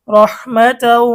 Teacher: ঈদগামে বাগুন্নার 4 হরফের একটি হচ্ছে ওয়াও, তানভিনের পরে ওয়াও এসেছে, এখন গুন্না সহ মিলিয়ে পড়তে হবে।